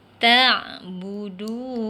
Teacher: du tu kena baca panjang 2 harakat, itu al-asli.